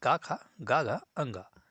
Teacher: क वर्ग के जितने भी वर्ण होते हैं जैसे क ख ग घ अंग इन सभी का उच्चारण स्थान कंठ होता है